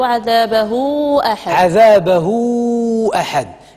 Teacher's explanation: هذا هو مد الصله الكبرى كن مدوه سته ديال الحركات